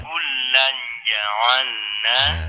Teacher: menyamarkan bunyi tanwin ke huruf jim disertai dengung seukuran 2 harokat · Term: ikhfa